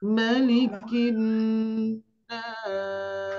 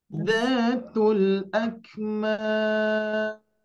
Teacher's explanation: Nah, ini kita ambil 4 harokat. Setiap ujung mad arid li sukun ini kita baca 4 harokat ya.